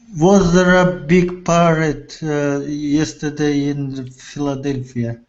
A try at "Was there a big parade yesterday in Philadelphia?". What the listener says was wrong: Remember intonation at the end. It's a yes or no question. So intonation goes up. Yeah, your tone goes high.